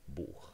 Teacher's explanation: And then we would have an underlying form for the word book that looks like this, Buch, with the palatal fricative, which triggers the rule because you have a back vowel and then the phoneme, and then the rule changes the palatal fricative into a velar fricative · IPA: [buːx]